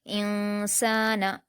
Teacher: نون ساکن کے بعد سین ہے جو حروف اخفا میں سے ہے اس لیے یہاں اخفا کا قاعدہ ہوگا ، انسان، سین پر الف مدہ ہے 2 حرکات کھینچیں گے،